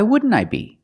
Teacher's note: You see the NT in wouldn't is between vowels, so you don't really hear the T.